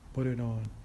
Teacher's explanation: Instead of saying put it on, we say put it on, just as a single word. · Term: Linking